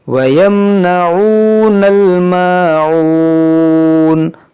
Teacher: الْمَاعُونَ، دیکھیں یہاں وقف کریں گے تو مد عارض ہوگا، کیونکہ واو مدہ کے بعد نون پر عارض سکون ہے رکنے کی وجہ سے